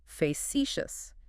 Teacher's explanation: Three syllables, stress on the second one.